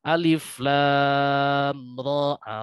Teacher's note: Alif lam ro ah. Huruf r dibaca pendek, dua harakat, tidak sepanjang huruf lam, yang dapat dibaca hingga enam harakat.